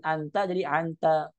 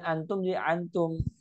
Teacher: Jadi dia mengganti hamzah menjadi ain. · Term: an-anah